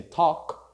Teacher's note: Be careful with talk. We do not pronounce the L, so we say talk in present, and in past we say talked.